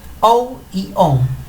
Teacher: Cuando decimos la palabra on, sentimos un poquito de vibración en la nariz.